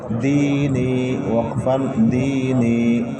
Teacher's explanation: یا ساکن سے پہلے زیر ہے، یا مدہ ہوگی. حروف مدہ کو ایک الف برابر کھینچ کر پڑھتے ہیں.